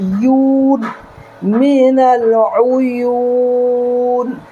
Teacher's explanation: یو کو ہم 4 second تک لمبا کر سکتے ہیں، کھینچ سکتے ہیں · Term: مد عارض للسکون وقفی